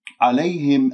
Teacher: عليهم الياء لين، يعني ساكنة قبلها مفتوح، ما أقول عليهم، هكذا نبرتها وأنه حسستني بأنها مشددة وهذا خطأ، لأنها ساكنة قبلها مفتوح.